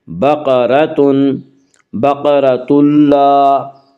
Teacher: اس کا قاعدہ یہ ہے کہ نون ساکن یا تنوین کے بعد اگر حروف یرملون میں سے کوئی حرف آئے تو ادغام ہوگا، لام اور را میں ادغام بلا غنہ ہوگا۔ یہاں تنوین کے بعد لام آ رہا ہے اس لیے یہاں پہ ادغام بلا غنہ ہوگا۔ · بقرۃ، را کو پر پڑھیں گے، اس کا قاعدہ یہ ہے کہ را کے اوپر زبر پیش آئے تو را کو پر پڑھا جائے گا، را کے نیچے زیر آئے تو را کو باریک پڑھا جائے گا، یا را کے اوپر زبر اس لیے را کو پر پڑھیں گے۔